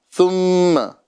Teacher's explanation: شروع میں جو ثا ہے یہ بغیر سیٹی کے ہیں